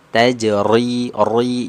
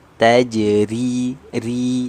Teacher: huruf ro yang berharokat kasroh dibaca tarqiq. Nah, berarti bacaannya tipis.